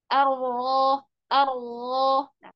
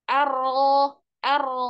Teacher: jangan menggunakan bibir tapi pakai eh libatkan lidah makrasnya kan eh ujung lidah atau punggung lidah bertemu dengan gusi atas jadi bibirnya tidak boleh ikut ke atas